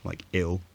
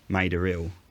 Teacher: This person writing the late 1800s uses an example of the place name Maida Hill. Cockney speakers dropped the h in hill so that it started with a vowel when they pronounced it, like ill, and this triggered the linking r in the word Maida, so the place name was pronounced Maida Ill, even though there was no r phoneme there historically. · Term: intrusive r